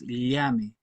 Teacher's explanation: Y tiene que ver con que esa letra, o mejor dicho, esa consonante es palatal, es decir, la lengua impacta el paladar cuando se ejecuta ese sonido